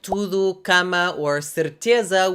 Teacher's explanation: the standard stress pattern is of course the penultimate syllable, except for when a word ends in I, U, R, or L.